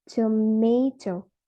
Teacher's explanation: in the word tomato, the stress falls on the second syllables. It will sound like tomato.